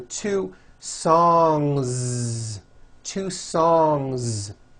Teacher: song ends with a voiced ng sound so if you make it plural don't forget to add a voiced Z ending